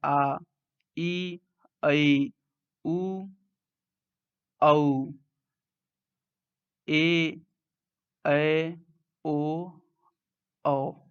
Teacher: दीर्घ स्वर के उच्चारण में हस्व स्वर से अधिक समय लग रहा है, इसलिए हम इसको दीर्घ स्वर बोलेंगे।